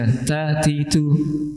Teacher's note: ada hams: ta, ti, tu. Ada udara yang keluar.